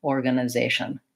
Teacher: I'm just really touching on those schwas quickly and lightly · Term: unstressed schwa